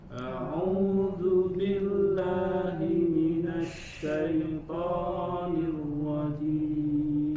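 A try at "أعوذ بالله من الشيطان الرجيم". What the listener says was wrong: Nah, sedikit kita sempurnakan lagi ya konsistensi dalam membaca mad atau panjang ya, karena setiap mad sudah ada miqdar, sudah ada ukurannya masing-masing. Yang 2 harokat, maka kita sempurnakan untuk terus bisa membacanya konsisten ya dengan 2 harokat. A'udzu billahi minasy syaithanir rajim.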